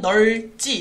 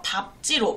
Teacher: 밟다의 밟은 예외적으로 자음 앞에서 밥으로 발음한다. 즉 똑같이 리을 비읍이 오는 단어인데 넓지의 경우에는 널지 리을로 발음이 돼요.